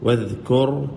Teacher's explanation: वज़कुर दाल पढ़े ज़ुबान निकाल के, वज़ नहीं है · दाल पढ़ते हुए ज़ुबान बाहर निकले